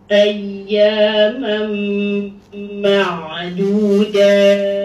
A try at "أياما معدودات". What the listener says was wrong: Dal Melayu tak mau, kita nak dal Arabi ya. أياما معدودات